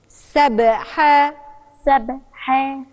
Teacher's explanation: لو أنا قلت سبي يبقى أنا كسرت الباء وهي مش مكسورة هي ساكنة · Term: القلقلة